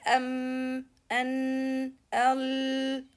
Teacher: normal sukun comes with collision, no qalqalah.